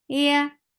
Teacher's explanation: Even though you are lifting your tongue up towards the palate, but you're not touching it, that is making ya very soft.